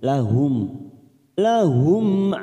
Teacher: mim sukun bertemu Ain namanya bacaan idhar syafawi kita baca jelas tanpa mendengung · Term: idhar safawi